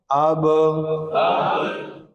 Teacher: جب پڑھتے ہوئے آواز بند ہوئی یہ صفت شدت ہے، بند ہونے کے بعد جو آواز ہلی وہ صفت قلقلہ ہے